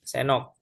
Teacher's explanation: Huruf D yang ada pada kata sendal itu dileburkan. suaranya dihilangkan. Begitu ya, dileburkan ke huruf N, senal. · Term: asimilasi